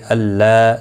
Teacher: اللہ کا لام اس زبر کی وجہ سے پر پڑھا جائے گا. اس کے اوپر کھڑی زبر بھی ہے، 1 الف کی مقدار کے برابر کھینچ کر پڑھیں گے.